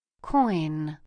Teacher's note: Now in that word coin you can see how the soft pallet moves back down so that the sound can come out of the nose for the letter N